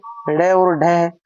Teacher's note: उत्क्षिप्त व्यंजन हम पीछे पढ़ के आ गए ड़ और ढ इनको फेंका हुआ या उछलता हुआ भी बोलते हैं